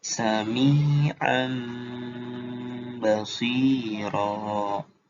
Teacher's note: Dan jangan lupa ditahan ya, didengungkan kayak idgham biguna. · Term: iklab